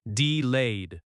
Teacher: Delayed has stress on the second syllable.